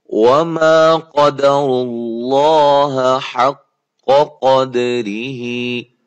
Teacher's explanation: قاف کو موٹا کرنا ہے, اور را بھی موٹی ہو رہی ہے, لفظ اللہ کلام بھی پیش آنے کی وجہ سے موٹا ہو رہا ہے.